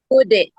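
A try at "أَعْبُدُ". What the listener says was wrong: Dia hampir badek begitu, hampir badek begitu ya. A'bud. Bud. Itu adalah bacaan qalqalah kubra, di mana pantulannya lebih keras. Jadi hukum tajwid yang ada di dalam surat Al-Kafirun itu yaitu hukum tajwid qalqalah kubra, yaitu terdapat pada ayat ketiga dan ayat kelima, yaitu a'bud, bacaannya lebih keras.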